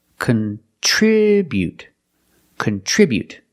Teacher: With a verb, we say contribute. We put the stress on the second syllable. · We put the stress on the second syllable, contribute, contribute.